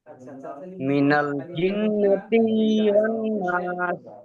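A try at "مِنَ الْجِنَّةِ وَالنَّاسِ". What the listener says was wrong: জিন্নাতি টান নেই। মিনাল জিন্নাতি ওয়ান নাস। মিনাল জিন, জিন গুণ হবে। তিতে টান হবে না। মিনাল জিন্নাতি ওয়ান নাস।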